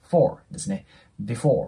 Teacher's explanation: F▁の発音というのは下唇の粘膜あたりを上の歯で押さえて▁for▁と発音する ので▁before▁と発音してもらえたらと思います。で、その後の▁going▁to▁bed▁なんですけど、こちらに関してもこの▁going▁の▁G▁また破裂音で音がなくなります。going▁to▁で、そのね、最後の▁bed▁ですね。で、この▁bed▁の▁D▁で終わって、その後▁is▁から始まってるんで、子音足す母音っていうのは音がリンキングして▁bed▁is▁になりますね。bed▁is▁で、最後の▁important▁これもね、注意が必要です。これね、アメリカ英語ではこのね、tan▁の部分ですね。ここの▁t▁の音がなくなります。なので、important